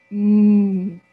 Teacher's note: a vibration so m is a voice sound listen again m this sound can be stretched it is a continuent sound